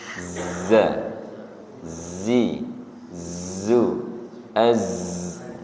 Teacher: ujung lidah berada di antara ruang gigi seri atas dan ruang gigi seri bawah. Sifatnya adalah sofir atau mendesis. Z zi zu az mendesis nggih.